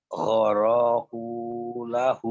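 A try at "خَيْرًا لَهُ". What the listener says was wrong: Oh salah banget. Bukan goroku itu mah. Khair.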